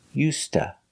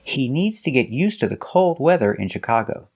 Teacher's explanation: us and to is pronounced T So together you hear USTA you link the words used to and you hear USTA